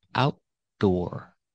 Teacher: on the first syllable outdoor seating we cannot say outdoor outdoor we cannot use a fast D we need that stop T and then the d a full D